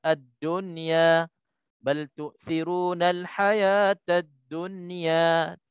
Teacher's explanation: nun mati bertemu dengan ya dalam satu perkataan, maka jangan dengung. Tak boleh dengung. Hukumnya izhar mutlaq.